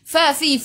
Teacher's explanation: Fa fi fu gigi atas menyentuh perut bibir bawah.